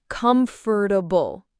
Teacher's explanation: Many people sometimes add extra syllables. It's actually usually said with 3 syllables, not 4.